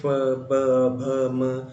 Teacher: जैसे फ, ब, भ, म, इन सभी को बोलने के लिए होंठों को आपस में जोड़ा जाता है फिर छोड़ा जाता है, उस प्रकार से यह व्यंजन जो है वह बोले जाते हैं। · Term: ओष्ठ व्यंजन